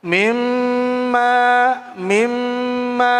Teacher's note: Gunnah, dengung. Berapa ukurannya? 3 harokat.